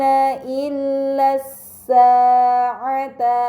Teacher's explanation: Kemudian pada kata illas sa'ata terdapat alif lam bertemu dengan huruf sin, ini dinamakan alif lam syamsiyah karena hamzah wasal pada alif lam dibaca fathah, lam pada lam syamsiyah tidak dibaca, namun langsung dibaca huruf setelahnya